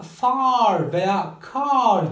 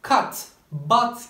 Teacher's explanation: far veya car kelimeleri uzun ve açık A'dan oluşurken cut, but gibi kelimeler ise kısa ve kapalı A'lardan oluşuyor